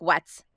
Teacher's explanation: Bronx lives really far forward in the nose like when they say things like what's like it's this is like hyper nasal cuz if I block my nose you get all of that you get all that resonant change because so much of the air flow is coming through my nose.